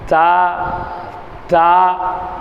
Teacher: நம்மளுடைய நாவினுடைய நுனி மேல்முரசுகளில் பட்டு வெளிவரக்கூடியது